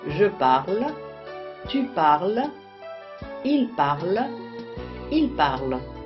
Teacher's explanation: les terminaisons E, ES, E, ENT ne se prononcent pas.